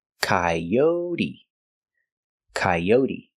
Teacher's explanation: the long o yo like Go and show k o and the t is pronounced with a D sound d d coyote and the E is pronounced with a long · And the E is pronounced with a long E like green beans, coyote, coyote. The stress is on the second syllable